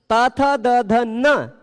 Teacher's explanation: त थ द ध न इन सबके उच्चारण में दांत टच हो रहा है, इस कारण ये 5 तो स्पृष्ट हैं, पर लि में दांत स्पर्श नहीं होता, पर हवा सबसे ज्यादा लि में दांत पर ही प्रेशर डालती है।